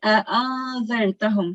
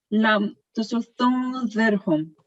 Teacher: So here we have to say a'adhartahum. So you have to conceal the nun sakin sound for a bit. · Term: ikhfa